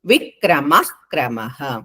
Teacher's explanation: మ తర్వాత విసర్గలు తర్వాత క ఉంది కాబట్టి పొల్లు హ వస్తుంది.